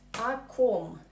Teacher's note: we write o, but we normally pronounce it as a because of Russian reduction law